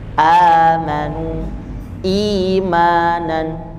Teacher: Hamzah bertemu dengan alif jadi bacanya dua harakat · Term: mad Badal